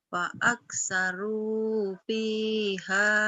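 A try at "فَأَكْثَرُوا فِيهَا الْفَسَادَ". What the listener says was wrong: H-nya jadi pendek karena ketemu alif lam komar ya, fihal. Nggak panjang ya kayak fa aksaru fihal fasad. Fa aksaru fihal fasad.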